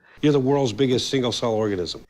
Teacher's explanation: The S at the end of worlds is pronounced as a Z sound, not a voiceless S. Plural S's that come after voiced sounds are pronounced as a Z.